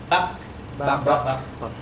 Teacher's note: Ketika disukun dia ditekan kemudian lepas.